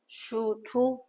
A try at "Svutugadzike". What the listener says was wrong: Not Shu. Su. Svutugadzike. Sutu. Sutu.